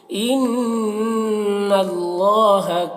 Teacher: ان نون مشدد ہے، غنہ ہوگا. اللہ کو پر پڑھیں گے.